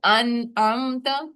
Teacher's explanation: ان نون پہ غنہ بھی نہیں ہونا چاہیے